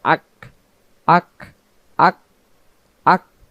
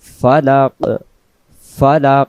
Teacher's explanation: কফ এর উপরে যদি সাকিন থাকে তাহলে উচ্চারণ হবে আওয়াজটা ভেসে উঠবে